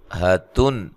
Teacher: یہاں نون تنوین کا اظہار ہے، غنہ نہیں کریں گے کیونکہ آگے حروف حلقی میں سے ہا آ رہی ہے.